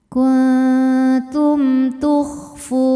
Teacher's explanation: Sebab mim sukun menghadapi huruf selain mim dan ba, yaitu huruf ta, maka mim sukun kita bunyikan dengan jelas. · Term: izhar syafawi